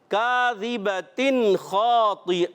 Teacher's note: ذال کی ادائیگی کلیئر رکھنی ہے, زا سے نہیں بدلنا چاہیے